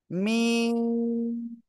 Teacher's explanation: দুই ঠোঁটের শুকনো জায়গা থেকে মিম অক্ষরটা উচ্চারণ হবে